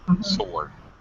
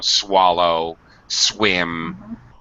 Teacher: The W is actually silent. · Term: No W sound